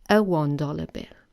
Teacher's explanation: the letter O here has the sound W, the semi-vowel W